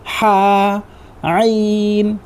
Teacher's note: ये दोनों हरूफ हलक के दरमियान वाले हिस्से से अदा होता है।